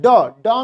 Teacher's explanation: ड में जीभ मुड़ती है और पीछे, तालु के पीछे होकर के जाती है, वो मूर्धा होता है। ठीक है, मूर्धा होता है।